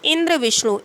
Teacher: इनमें संयुक्त अक्षर से पहले के अक्षर ई और व पर जोर दिया गया है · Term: बलाघात